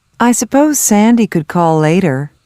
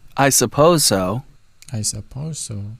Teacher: the same consonant sound at the end of one word and at the beginning of the next word is pronounced only once